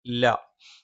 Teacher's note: ല നാവിന്റെ അറ്റം മേലെ മുൻപല്ലിനെ മോണയിലാണ്